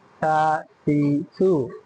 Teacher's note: জিহ্বার আগা সামনের উপরের দুই দাঁতের আগার সঙ্গে লাগায় পড়তে হয়। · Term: 13 নম্বর মাখরাজ